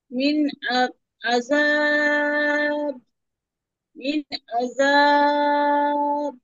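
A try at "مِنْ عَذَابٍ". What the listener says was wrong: কলকলা হবে না? করছেন, কলকলা হরফ হয়ে যাচ্ছে, ধাক্কা দিয়ে পড়েন। মিন আযাব।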